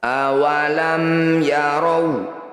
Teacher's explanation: cara bacanya bunyi mim ini baca dengan jelas, rapatkan bibir, tidak usah dengung. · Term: izhar syafawi